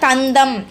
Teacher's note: நம்ம நாக்கோட நுனி வந்து மேல்வாய் பல்லோட அடிப்பகுதியை வந்து தொடுவதுனால அத நம்ம என்ன சொல்றோம் அப்படின்னா நகரம் அப்படின்னு சொல்லக்கூடிய தா இருக்குது சரியா இதுக்கு நம்ம இத என்ன சொல்லுவோம் அப்படின்னா இந்த நைய தகரை தடுத்து வருவதுனால தன்னகரம் அப்படின்னு சொல்லக்கூடியதா இருக்குது.